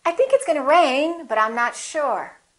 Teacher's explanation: it's going to rain if i say it the second way with my intonation going up with the pitch going up it sounds like something else is coming like i'm not finished speaking